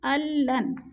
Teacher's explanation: لام کو نون کے ساتھ ملا کر پڑھیں گے، درمیان والا نون ساکن نہیں پڑھا جائے گا